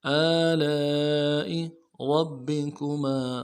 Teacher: را کو موٹا کرنا ہے ، با کے ساتھ ملائیں گے، با کے اوپر تشدید زور